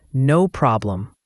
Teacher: For problem, the O sound is like in hot, and the M at the end is clearly pronounced, closing your lips.